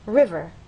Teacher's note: understand that the first syllable is stressed